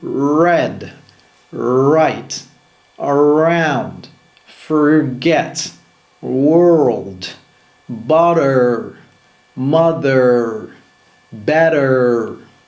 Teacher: Le R américain par contre est rétroflexe, c'est-à-dire que la langue se courbe vers l'arrière du palais sans contact.